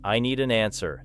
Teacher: Read the sentence "I need an answer," and notice how the written spaces divide the words clearly, then listen to yourself speaking it and allow the final D of need to connect with an, while the N in an flows into answer. The sentence should not become four isolated blocks because it carries one simple idea, and your mouth should express that unity through movement.